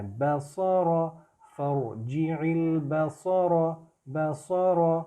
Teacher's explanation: ہو، فرجع البصر، بصر، میں با سا را نہیں کر رہا، با کی نارمل ساؤنڈ ہے، سو کی تھوڑی موٹی ہے اور را کی بھی تھوڑی موٹی ہے